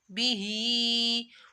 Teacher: ہاں کے نیچے کھڑا مادہ ہے، اس کو ایک الف کے برابر کھینچنا ہے